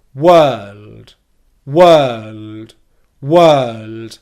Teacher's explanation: And because we've already gone up into the dark L position, we're in a position that's fine to release the D sound from. And all you need to do to go from the dark L sound to the D sound is very simply temporarily pause airflow and then just let your tongue drop down a little bit. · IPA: /wɜːld/